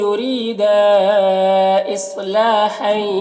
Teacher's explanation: ری میں یا را کو باریک پڑھیں گے اور یہاں پر یا مدہ ہے، ایک الف کے برابر کھینچیں گے۔ دا میں مد یا مد منفصل سے 3-4 الف کے برابر کھینچتے ہیں اور ایک الف کے برابر بھی کھینچ کر پڑھ سکتے ہیں۔